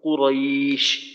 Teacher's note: আর একটা বিষয় হলো কফ মাখরাজ থেকে শক্তভাবে মোটা করে উচ্চারণ করা, এরপর র র এর উচ্চারণটাও মোটা করে করা